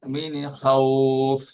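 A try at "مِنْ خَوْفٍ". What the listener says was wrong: মিনে কেন? এয়া কি ভুল করে? মিন নাড়াচাড়া করা যাবে না।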